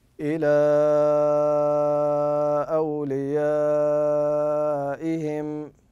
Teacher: فلما كان حرف المد في كلمه وسببه وهو الهمز في كلمه اخرى سمي لذلك منفصلا سمي لذلك منفصله وطريقه النطق الصحيح به ان تقول الى اوليائهم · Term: مد منفصل